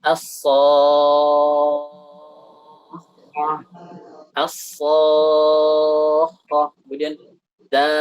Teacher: Miqdaru maddihi, kata beliau, panjangnya itu adalah yumaddu luzuman sitta harakatin li jami'il qurra. Panjangnya itu 6 harakat untuk semua qurra. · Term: mad lazim